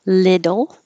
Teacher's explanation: the t's change to d's